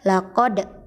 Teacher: cara membacanya adalah dengan memantulkan bunyi suara kita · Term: qalqalah